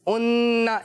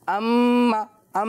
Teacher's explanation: ये नून मुशद्दद और मीम मुशद्दद नेज़लाइजेशन के साथ प्रोनाउंस होता है, गुन्ना किया जाता है इसमें।